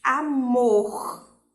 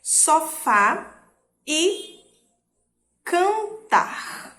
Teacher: A sílaba mais forte aqui está sendo a última. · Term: oxítonas